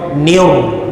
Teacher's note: Nun bagi bawah ditekan pada ra, niur, bunyi niur. Nun bagi bawah tekan pada ra, niur gitu, bunyi yang tebal